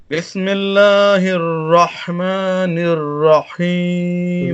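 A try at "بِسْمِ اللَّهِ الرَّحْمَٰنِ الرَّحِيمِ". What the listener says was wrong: لیکن اس میں وہی بات آ گئی، با وہی آپ کی نکل رہی ہے بے والی. بے نہیں، بی باریک کریں. بسم اللہ الرحمن الرحیم.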